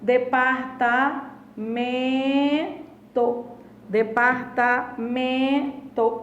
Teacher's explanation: Esse em é como se fosse um E com um tio. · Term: dígrafo vocálico